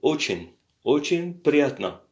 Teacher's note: Alors, on voit un peu очень, l'accent est sur le O, очень приятно. Le A à la fin, c'est un O puisqu'il n'y a pas l'accent dessus, c'est приятно qui a l'accent.